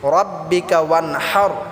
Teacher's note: বড় হা টাকে আমরা গলায় চাপ দিয়ে উচ্চারণ করতে হবে